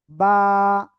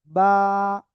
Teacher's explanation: দুই ঠোঁটের ভিজা অংশ থেকে এই অক্ষরটা উচ্চারণ হবে, বা একালিপটা নিয়া